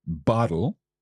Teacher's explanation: that t sound in there that you're saying bottle is kind of like a flick with your tongue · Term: Spanish R